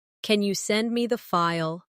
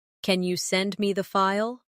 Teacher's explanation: Instead of saying flatly, "Can you send me the file?" use a rising tone at the end